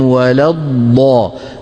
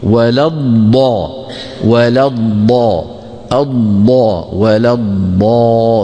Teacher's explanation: ضادين، ضاد ساكنة مدغمة في ضاد